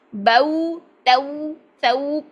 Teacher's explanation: پورے گول ہونٹ چونچ کے طرح، جیسے پرندے کی چونچ ہوتی ہے ایسے گول ہونٹ تک آپ کا یہ ساؤنڈ جانی چاہیے۔ بو تو، اب ایسا نہیں کہ آپ لوگ اس کو لمبا کرنا شروع کر دیں، بو نہیں، 1.5 حرکت میں بھی ختم کرنا ہے اور اپنی ساؤنڈ بھی اچھی کرنی ہے۔ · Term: واؤ کی ساؤنڈ